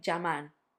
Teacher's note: some people in some countries would say llamar, like a j